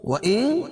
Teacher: وَإِن تُبْدُوا مَا فِي أَنفُسِكُمْ أَوْ تُخْفُوهُ، وَإِن اخفا حقیقی کیونکہ نون ساکن کے بعد حروف اخفا کے 15 حرفوں میں سے تا ہے تو یہاں ناک میں آواز کو چھپا کر پڑھیں گے